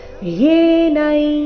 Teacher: ಅನುಸ್ವಾರದ ಉಚ್ಚಾರಣೆ ನಾಸಿಕ ಯ ರೀತಿ